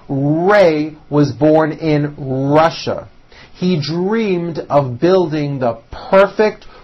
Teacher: notice my lips come forward on all my RS and W's